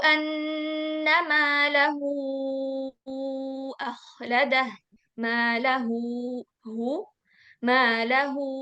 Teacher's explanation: setelahnya hamzah sehingga bacanya panjang empat harakat karena namanya kubra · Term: mad silah kubro